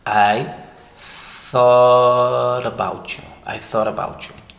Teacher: thought termina en la t y about empieza con un sonido vocálico ahí si juntamos esos sonidos y about esa t queda en medio de vocales y obviamente hacemos el flap